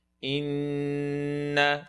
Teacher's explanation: You have the noon, full nasal sound.